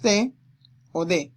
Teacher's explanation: Las dentales se articulan al contacto del ápice de la lengua, es decir, la punta de la lengua, con la cara interna de los incisivos superiores